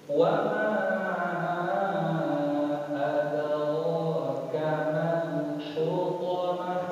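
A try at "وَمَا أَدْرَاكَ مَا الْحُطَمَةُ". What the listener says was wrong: Ra-nya baca tebal. Wa ma adraka mal.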